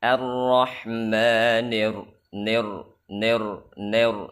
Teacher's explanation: ketika ingin berpindah kepada ro dan ingin menebalkan huruf ro maka dia tidak menyempurnakan kasrah pada ni nah karena buru-buru ingin pindah dari ni ke ke ro arrahmanir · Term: imalah